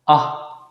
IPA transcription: ɑ